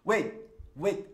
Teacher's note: nesse trecho do filme, ele nem pronuncia o t